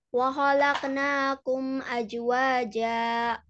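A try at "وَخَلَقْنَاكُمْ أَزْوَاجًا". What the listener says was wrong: Nah, jangan aja, tapi azwaja. Za itu harus jelas.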